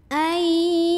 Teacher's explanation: Hati-hati hamzahnya jangan mantul. Syiddah kuat ya, tertahan bunyinya.